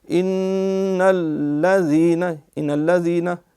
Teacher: ہو جائے گا، نون پہ بھی شد ہے، لام پہ بھی، نون میں غنہ بھی ہے، وہ بھی ظاہر ہو، ان ایک الف جتنی دیر لگے